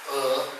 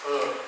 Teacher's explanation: the sound a is raised to a non low vowel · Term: raising